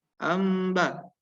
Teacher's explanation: intibak syafatain, yaitu kita tutup tapi lunak